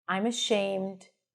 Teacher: you hear that pitch staying up? It means that something else is coming up. That's the indication that there is a comma here, right?